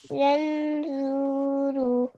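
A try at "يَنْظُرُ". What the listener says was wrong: जू को नहीं खींचना, ठीक है, यंजूरू। और नून के ऊपर जबर।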